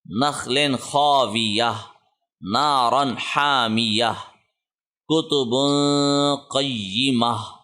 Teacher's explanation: گول تا کے اوپر جو وقف ہے اس صورت میں یہ ہا میں تبدیل ہو جائے گا، اس پہ کوئی بھی سائن آئے گا وہ ہا میں تبدیل ہوگا.